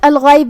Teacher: غین کی ادائیگی حلق کے اوپر والے حصے سے ہے. غین حروف تفخیم میں سے بھی ہے تو ہمیں اسے بھاری آواز میں پڑھنا ہے. آخر میں با کے نیچے زیر ہے تو ہم با کو زیر سے ادا کریں گے اور اسے ظاہر کریں گے.